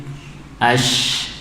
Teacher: Kalau shin, ash, misal ha juga, ini tidak bergetar ya karena udaranya mengalir tidak tertahan. Yang mana kalau tertahan berarti berubah menjadi suara. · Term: shin hams